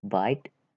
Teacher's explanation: For example, bite and kite. B, bite with b, voiced bilabial and plosive or stop.